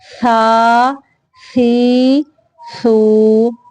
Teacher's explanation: سا کو سین سے سیٹی سے آواز نہیں دینی، یعنی سا میں سیٹی کی آواز نہ ہو، نرمی سے. سا، سا کھڑی زبر سا، زبان کی نوک کو اوپر والے سامنے کے دو دانتوں کے سرے سے لگا کے ادا کرنا ہے.